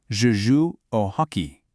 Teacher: Kind of like rugby, we're using an English word, but applying French phonetics. The H in French is silent, and the emphasis shifts just a bit. It's not hockey, it's okay.